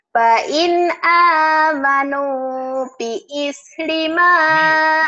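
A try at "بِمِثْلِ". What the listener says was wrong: Bimis. Bimis bukan biis, bimis. Ini mimnya ditahan juga sama ikhfa sapawi. Fa in amanu bimithli ma amantum bihi faqad ihtadaw.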